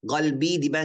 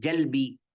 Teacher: Dubai, qalbi dibilang pakai jim, jalbi